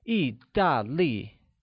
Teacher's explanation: italy is translated as italy in mandarin where all three tones are falling